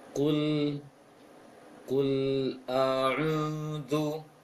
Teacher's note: ketika membaca ku yang dhammah, kemudian masuk ke lam yang sukun, bibir tidak boleh menebal lagi, tidak boleh dimonyongkan lagi. Prakteknya, kul, jangan kul, tapi kul a'udzu, kul seperti itu bacanya dalam sukunnya.